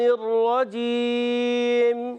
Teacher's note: را کو پر پڑھیں گے کیونکہ را پر زبر ہے. رجیم وقف کرنے مد عارض ہو جائے گا.